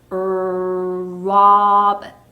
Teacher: 입을 길게 하고 어 자, 목구멍에서부터 어 하는 소리였죠. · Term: 단모음 오